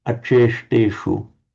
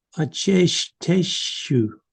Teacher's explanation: putting the tip of the tongue slightly back in the mouth to produce the retroflex means, bent back, the retroflex sound.